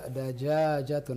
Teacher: jimnya agak panjang yang pertama